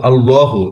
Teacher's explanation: এটা একটু এক আলিফ লম্বা হবে আর আল্লাহ মোটা হবে।